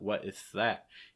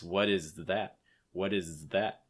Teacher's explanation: is that hold the z sound long enough before the th your stress is going to be on that · Another thing you want to be careful of is that Z sound on is. Make sure that you hold the Z long enough before you get to the TH. Otherwise, you may end up with a lisp sound.